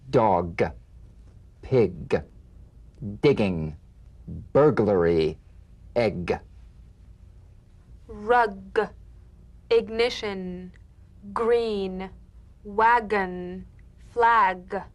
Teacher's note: the mouth without tightening pressing or pushing g g you'll feel a crisp tap and a voiced pulsation of the back of the tongue